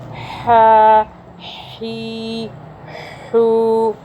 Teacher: इसी तरह ये वाला जो हा है ये हलक से आएगा। आपका जो ज़बान वाला साइड है हलक का, उससे थोड़ा पीछे से आएगी इसकी आवाज़।